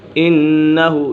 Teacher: یہاں پر نون مشدد ہے، نون مشدد میں سے غنہ ہوتا ہے